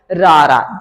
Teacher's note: ਜਦੋਂ ਅਸੀਂ ਰਾਰੇ ਨੂੰ ਉਚਾਰਦੇ ਆਂ ਤਾਂ ਕੰਬਾਹਟ ਪੈਦਾ ਹੁੰਦੀ ਆ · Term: ਕੰਬਵਾਂ ਵਿਅੰਜਨ